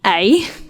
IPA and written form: ɛi (Ei)